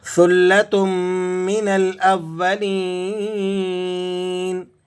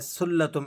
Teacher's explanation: آپ زبان کی نوک کو ذرا سا باہر نکالیں اور اوپر والے دانتوں کے ساتھ ملا کر اسے پڑھیں گے